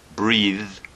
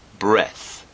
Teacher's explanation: breath breath breath now that's the noun from the verb breathe the verb has a hard th sound breathe and the noun has a soft th sound